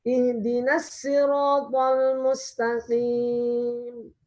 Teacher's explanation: untuk Qombul, muridnya dari Ibnu Katsir, dia bacanya pakai sin.